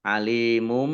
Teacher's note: Dumah tanwin bertemu dengan huruf ba, bacaan iklab dibaca membalik. Nah, dibaca baknya dibaca mim dulu.